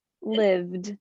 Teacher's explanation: this ed ending we don't add an extra syllable live lived there's no extra syllable there it just blends right into the next sound